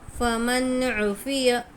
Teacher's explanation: बिल्कुल भी गुन्ना नहीं करेंगे, ज़ाहिर करके पढ़ेंगे